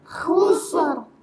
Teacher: Harusnya kusrin, ya dia waqaf jadi kasroh, jadi tebal. Tadinya tipis ya, kusrin tipis, kalau waqaf jadi tebal.